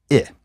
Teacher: here we have a high front but lax vowel · I is what's called a lax vowel. It's also pronounced somewhat less frontally than E.